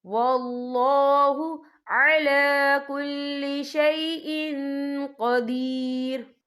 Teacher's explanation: یہ دیکھیں شیء، حمزہ کے نیچے تنوین ہے، تنوین کے بعد جو ہے قوف آ رہا ہے، اور قوف جو ہے اکفا کا ورڈ ہے، تو ہم یہاں اکفا کریں گے، تنوین کی آواز کو ناک میں چھپائیں گے.